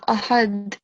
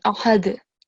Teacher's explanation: you have to create a jerking sound because dal is harufe qalqala